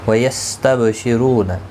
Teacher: با ساکن پر قلقلہ ہوگا. رو پیش کی وجہ سے پور پڑھا جائے گا. · رو واو مدہ ہے، ایک الف کی مقدار کے برابر کھینچ کر پڑھیں گے